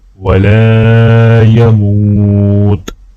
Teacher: میم کو واو کے ساتھ ملاتے ہوئے ایک الف کے برابر کھینچیں گے